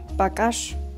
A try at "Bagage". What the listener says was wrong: Nein, nicht Bagasch. Bagage. Ihr müsst immer aufs Hintere langzogen. Das ist wie beim Bombole, da ist das jetzt ein Bagage.